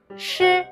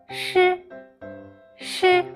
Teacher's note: keep a little distance from the front of your hard palate. At the same time, the airflow will be squeezed out of the narrow gap.